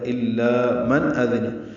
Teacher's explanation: نون ساکن کے بعد حمزہ آنے کی وجہ سے اظہار ہے